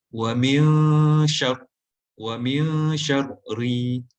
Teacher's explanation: Bila kita sebut syar, kita tak boleh sebut syar. Kita sebut dia dengan mulut agak muncung sedikit untuk membunyikan dia tebal. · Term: Ra tebal